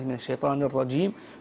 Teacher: هذا في العربيه غير صحيح، الرجيم ها تخرج من وسط اللسان الجيم هذه وتكون شديده. بعضهم يطلق عليها مصطلح التعطيش، وان كان هو مصطلح متأخر يعني حادث. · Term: الجيم العربية شديدة